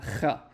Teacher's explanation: This is the raspy throat sound, both in biblical and in modern Hebrew. This is going to be the ch sound in both of them.